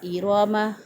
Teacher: را کے اوپر زبر ہے، را کو پر پڑھیں گے۔